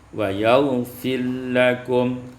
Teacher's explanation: idgham ra fil lam, diidghamkan ra pada lam menjadi wa yaghfir lakum